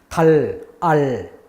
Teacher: L은 달, 알 이게 혀가 입천장에 딱 붙은 상태에서 안 떨어져요. 그러면 우리가 달 이렇게 소리 냈을 때 공기가 흘러가는데 어디로 가느냐? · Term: L 발음